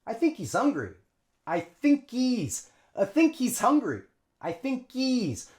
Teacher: So think links onto E, just a long E sound, but we drop the H.